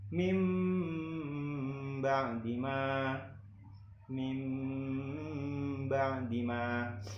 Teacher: menyuarakan huruf nun atau tanwin menjadi mim dengan merapatkan dua bibir serta mendengung. Contohnya yaitu mim ba'dima, mim ba'dima, di mana ada nun sukun bertemu dengan ba yang nantinya dibaca jadi mim, seperti yang tadi saya bacakan. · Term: iklab